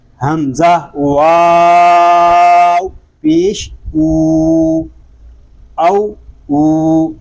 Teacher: تو یہ درست نہیں ہے، اس کو ہم ایک الف تک کھینچ کر پڑھیں گے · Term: واو مدہ